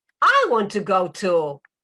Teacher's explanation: So I'm highlighting I, because probably you thought that I would stay home.